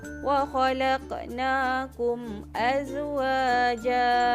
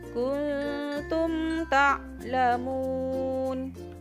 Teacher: cara bacaan izhar syafawi pula ialah dengan menjelaskan sebutan huruf mim tanpa dengung